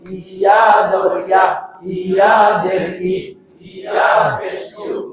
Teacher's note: ইয়া জিব্বার মাঝখান থেকে নরম ভাবে আদায় হবে